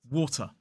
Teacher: And then, of course, the Americans will use more of a flap T, which is more like water. But in a modern British RP accent, we do pronounce that T sound when it comes in the middle of two vowels